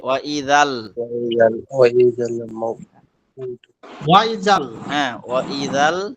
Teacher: এই জাটা পরের লামের সাথে মিলবে।